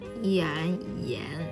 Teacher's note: Initial is 一 and the final is an. It's a rising tone.